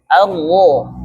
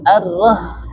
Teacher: Jadi jangan arh tipis tapi pangkal lidah kita yang di belakang naikkan sehingga tenggorokan kita menyempit dan itu suara menjadi tebal · Ra itu ketika berharokat fathah dia harus tebal.